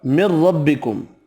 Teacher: را زبر کی وجہ سے پر پڑھنا ہے